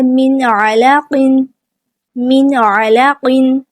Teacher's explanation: نون ساکن کے بعد عین آ گیا، عین بھی حروف حلقی میں سے ہے، حلق کے درمیان والے حصے سے ادا ہوتا ہے، نون ساکن کی آواز کو ہم یہاں پہ بھی ظاہر کر کے پڑھیں گے، من علاقن، اس طرح۔